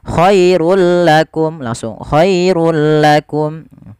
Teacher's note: Khairun ketika bertemu lam langsung dimasukkan ke huruf lam tanpa ada penahanan jadi contoh Bagaimana khairulakum langsung khairulakum kemudian lafal mim mati bertemu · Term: Idgham bila gunah, idgham bila gunnah